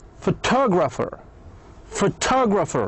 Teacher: As you can see, we have added the suffix er to the word photograph. Since we add er, the stress moved from pho to to.